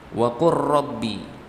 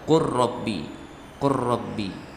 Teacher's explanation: Sebenarnya di sana ada qul dan rabbi, dua kata. Tapi karena makhrajnya berdekatan, ya, lam dan ro, maka dibaca qur rabbi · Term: idgham mutaqarribain